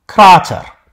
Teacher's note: it had a long a which is actually pronounced as a long version of a short a